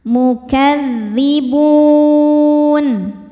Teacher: Maka bnya ini panjang boleh dua atau empat atau enam harakat asal konsisten dalam sekali baca. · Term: mad arid lisukun